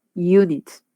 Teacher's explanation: ven que tiene una J, no empieza con una i, no empieza con una u, empieza con una J